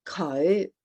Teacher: there's that little swing up there, the low rising